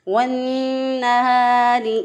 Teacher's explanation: रॉ के नीचे ज़ेर है, इसको बारीक पढ़ेंगे। रॉ के नीचे ज़ेर हो तो बारीक पढ़ते हैं, ज़बर या पेश हो तो मोटा पढ़ते हैं।